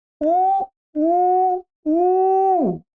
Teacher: माने ये एक मात्रिक हो गई, द्विमात्रिक हो गया, त्रिमात्रिक हो गया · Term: ह्रस्व दीर्घ प्लुत